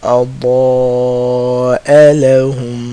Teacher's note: The sides of the tongue, the back sides of the tongue, hitting the gums of the top side teeth, the molars. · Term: ضاد